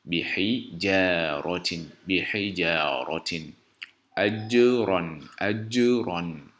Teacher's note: la lettre ja qui se prononce au milieu de la langue, donc lorsque la langue s'appuie au palais avec un souffle sec, et qui a 5 attributs ayant des opposés et un attribut qui n'a pas d'opposé, qui est le rebondissement.